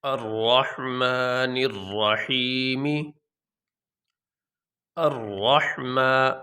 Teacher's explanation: اس میں را موٹا ہو رہا ہے، ایک حرف موٹا ہے اس میں